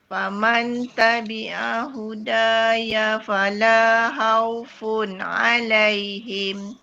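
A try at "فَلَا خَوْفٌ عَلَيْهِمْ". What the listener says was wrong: Okay, khaw tu sikit lagi. khaw. Dia bunyi o tu. Khawfun. Khawfun.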